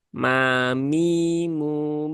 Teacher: Kemudian ma-nya tipis ya, jangan ditebalkan menjadi me, me, tetapi cukup ma biasa.